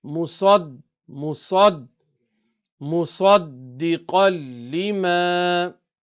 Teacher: Dal is qalqala and it's got tashdeed, so it's an emphasized qalqala. So you have to emphasize the kala, a big echo.